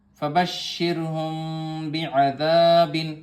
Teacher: یہاں پر میم ساکن کے بعد با آیا ہے تو اخفاء شفوی ہوگا.